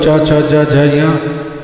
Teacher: इनका उच्चारण करते हैं तो जीव धीरे से ऊपर की तालु को छूती है तब शब्द निकलते हैं